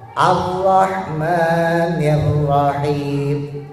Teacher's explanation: Jadi getarannya tidak lebih dari 2.